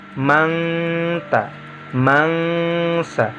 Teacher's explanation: cara membacanya adalah merubah nun sukun atau tanwinnya berubah menjadi kalimat eng atau menjadi bunyi eng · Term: ikhfa hakiki